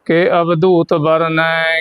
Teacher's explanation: ਇਹ ਦੁਤ ਬੋਲੂ ਦਦਾ ਤੇ ਧਦਾ ਜਿਹਾ ਮਿਕਸ ਕਰਕੇ